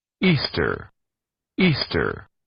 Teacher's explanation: suena con ese sonido de como que fuera una R al final, esa es la pronunciación norteamericana, es la pronunciación estadounidense.